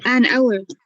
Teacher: We say an hour, although it begins with an H, but the H is silent. So the first sound is an O.